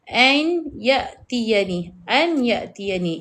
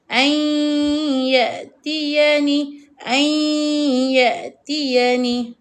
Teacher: Bunyi huruf nun tidak dengar. Tak berapa jelas bacaan huruf nun. Ai ai ai. Dia akan jadi ai tetapi hidung kita dengung. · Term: idgham bighunnah